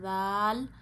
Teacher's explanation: ذال نرمی سے پڑھیے، زبان کو آپ نے اوپر کے دانتوں کے اندرونی کناروں پہ لگانا ہے۔